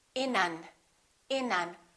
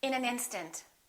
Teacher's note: We wouldn't say in an instant. We would connect the final consonant to the next vowel. So this N and this A would be said together.